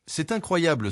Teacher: cet incroyable s'accentue sur la syllabe blée à la fin du groupe. Contrairement à l'anglais, le français n'accentue pas chaque mot individuellement séparément. · c'est incroyable s'accentue sur la syllabe blé à la fin du groupe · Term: accent tonique